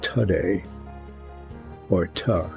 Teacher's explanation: where the O has been transformed into a short a